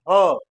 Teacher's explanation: ह का उच्चारण करते समय हमारे मुख से जो हवा निकलती है वह कंठ से होकर निकलती है यानी जीव का पिछला भाग